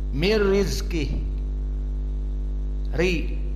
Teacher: Wa amma al-kasrah ri fa muraqqaqah